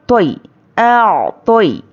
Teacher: अब यहाँ पर देखिए तो हुर्फ मुस्तालिया है, या तो को हम मोटा पढ़ेंगे। या पे जज़म और उसके पहले ज़बर यालीन है, नरमी से जल्द अदा करेंगे।